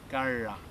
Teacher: See that my tongue turns backwards in my mouth in order to say the R. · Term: retroflex